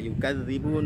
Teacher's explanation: berikan nabrah kepada zalnya. Kenapa? Ada tasydidnya juga